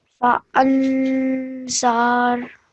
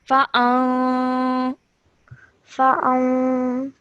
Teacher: a 2-second light nasal sound will be produced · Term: ikhfa nun sakin